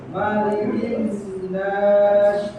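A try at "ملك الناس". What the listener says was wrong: sa, bukan nash, tapi yang kalau nash tengah, nas depannya. Nas, sa, nas. nunnya jangan lupa ditahan.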